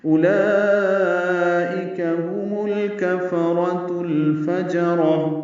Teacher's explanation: اولئک میں حمزہ کو جلدی اور معروف پڑھنا ہے، واو نہیں پڑھیں گے ، لام پر کھڑا زبر ہے اور اس کے بعد حمزہ · ہم میں ہا اقصی حلق سے ادا کریں گے